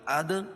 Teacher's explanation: دال پر قلقلہ ہے